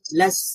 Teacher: লাম ফাতহা সিন সুকুন লাস, لام فتحة سين سكون لس লাস, এখানে সিনের মধ্যে সাউন্ডটা আমরা জারি রেখেছি